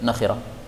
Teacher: nonnya boleh dibaca panjang atau pendek